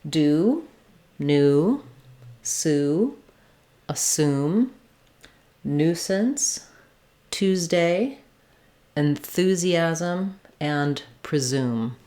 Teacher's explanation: When the letter U or the oo sound comes after any of these sounds, the D, N, S, T, Th, or Z sounds, it's likely to be an oo. The Y part is dropped and we just say the oo sound. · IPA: /u/